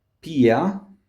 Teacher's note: the accent falls, the stress is on I